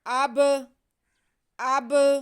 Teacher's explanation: ہم با کی آواز کو ہلا کے جنبش دے کے پڑھیں گے